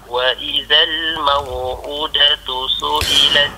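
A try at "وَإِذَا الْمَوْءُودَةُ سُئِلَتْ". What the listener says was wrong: Baik, u tu dibaca dengan dua harakat. Wa idzal maw'udatu su'ilat.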